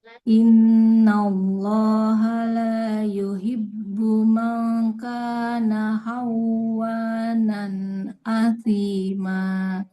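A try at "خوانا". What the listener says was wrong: Tidak khawa tapi kho. Nah, khawanan. Tidak khawa ya. makrotnya di kho bunyinya kayak ha. Khawa kayak ke vokal o ya.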